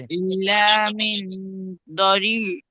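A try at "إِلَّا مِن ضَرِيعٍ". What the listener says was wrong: দরি, দরি, টান দিয়ে বলেন দরি।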